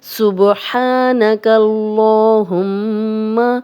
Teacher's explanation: یہاں لام کو موٹا پڑھیں گے، سبحانک اللہم، میم پہ شاد ہے تو غنہ کر رہے ہیں اور میم کی زبر کو لمبا ہونے سے بچانا ہے۔